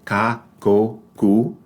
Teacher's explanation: This, before the vowels A, O, or U, or before a consonant letter such as L or R, it is pronounced like the English C in the word cat. But without the puff of air